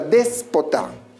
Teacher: Recuérdalo, última, penúltima y antepenúltima sílaba. Al encontrarse la mayor fuerza de voz en la antepenúltima sílaba, se constituye en una palabra esdrújula.